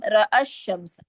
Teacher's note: رأى الشمس، جو الف مدہ ہے اس کا جو مد بدل کا الف ہے، یعنی مد بدل ٹو کاؤنٹ جو ہے وہ نہیں پڑھی جا رہی، یعنی وصل میں یہ ثابت نہیں ہے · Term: التقاء ساکن